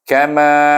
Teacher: Kama ma panjang, ka pendek. Menunjukkan ma itu dibaca dengan ma asli.